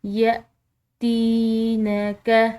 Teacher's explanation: تا کے بعد یا ساکن ہے تو ایک الف کے برابر اس کو کھنچاؤ دیں گے